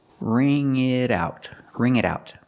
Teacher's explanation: the T and it changes to a fast D